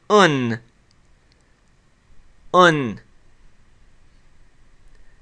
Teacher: It's the Dhamma, the U sound, with the nunation or the N sound connected to it.